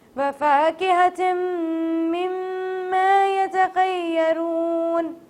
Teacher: اب میں نے دونوں جگہ پہ غنہ پرفارم کیا، کیوں کیا؟ کیونکہ دونوں جگہ پہ تشدید تھا، میم مشدد تھا تو یہاں پہ ہمیں غنہ پرفارم کرنا تھا